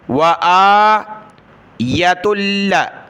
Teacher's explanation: حمزہ کو کھینچنا ہے، یا کو نہیں کھینچنا